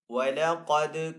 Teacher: قاف یہاں پہ حروف مستعلی میں سے تو قاف کو یہاں پہ پر پڑھیں گے. آگے یہاں پہ دال ہے، دال کے اوپر جزم کا سائن ہے تو یہاں پہ دال ساکن ہے.